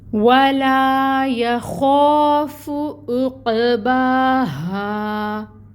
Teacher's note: یا خوف، عین کے اوپر پیش ہے، 1 کاؤنٹ ادائیگی ہوگی۔ قوف حروف قلقلہ میں سے، یہاں پہ قلقلہ ہوگا، قوف کو ہلائیں گے، آواز باؤنس ہوگی۔ با کے اوپر کھڑی مد ہے، 2 حرکت لمبا کھینچیں گے، اور الف ساکن سے پہلے ہا کے اوپر زبر کی حرکت الف مد کا رول ہو رہا ہے، تو ہا کو 2 کاؤنٹس لمبا کھینچیں گے، اور ہا کو ہم نکالیں گے اقصی الحلق سے۔